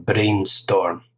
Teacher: brainstorm two syllables stress on the first syllable